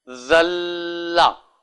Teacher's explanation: دو زبر ہیں، بظاہر ملاتے ہوئے تو وہ غنہ ہونا چاہیے، لیکن لام ہے اس لیے نہیں ہوگا